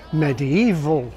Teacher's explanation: Now English can have syllabic L's as well, like in medieval.